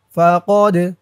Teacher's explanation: দাল কলকলের হরফ ধাক্কা দিতে হবে